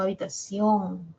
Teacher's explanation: La O tiene la mayor fuerza de voz.